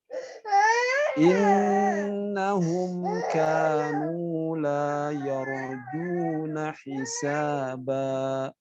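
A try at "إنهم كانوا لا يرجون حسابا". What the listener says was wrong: Ya, Masya Allah. Pas Pak ya.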